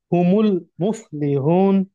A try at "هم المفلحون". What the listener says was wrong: نہیں بھائی، نون پہ زبر ہے نا، نون کا زبر پڑھنا ہے۔